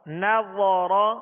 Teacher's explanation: را پر زبر ہے اس لیے را کو پر پڑھیں گے